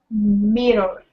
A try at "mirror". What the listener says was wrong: Oh, almost. Mirror. Give me a good R there. Mirror.